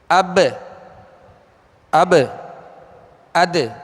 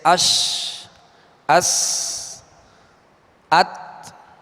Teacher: قلقلہ کا معنی ہے جنبش، لوٹنا، اور حروف قلقلہ کو ادا کرتے ہوئے مخرج میں آواز لوٹتی ہے، لگ کر لوٹتی ہے۔ جیسے اب، اد، یہ آواز لوٹ رہی ہے۔